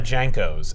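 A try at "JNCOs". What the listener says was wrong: Yeah, you gotta drop that vowel, though, because it's Jinkos!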